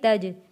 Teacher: جیم حروف قلقلہ ہے، آواز واپس پلٹ کر آئے گی